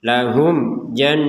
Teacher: mim sukun bertemu Jim ini dibaca jelas